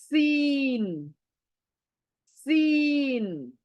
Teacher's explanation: यानी सीटी वाली आवाज होनी चाहिए न मोटी मोटी तो भूलकर भी नहीं होनी चाहिए सीन सीटी वाली आवाज उसी